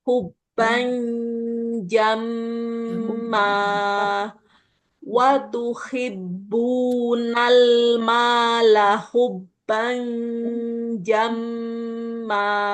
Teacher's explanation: jadi jim itu kan letaknya di tengah lidah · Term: dengungnya